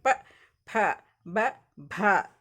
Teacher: ಎರಡು ತುಟಿಗಳು ಒಂದಕ್ಕೊಂದು ಇದು ಮಾಡಿ ಪ್ರೆಸ್ ಮಾಡಿ ಹೇಳ್ತೀವಿ ಪ ಭ ಈ ಅಕ್ಷರಗಳನ್ನ ನಾವು ಏನ್ ಮಾಡ್ತೀವಿ ಓಸ್ಟಿಯ ಅಕ್ಷರಗಳು ಅಂತ ಹೇಳ್ತಿವಿ